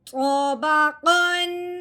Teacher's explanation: ہم نے دیکھا ہے آگے عین حروف ہلکی میں سے ہے، اب ہم نے تنوین پہ غنہ نہیں کرنا، بغیر غنے کے اظہار کے ساتھ پڑھنا ہے